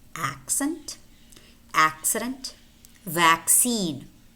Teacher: S might also be spelled double c, as in accent, accident, and vaccine, vaccine. Notice how it's always preceded by k, k, s, k, s. They're both voiceless.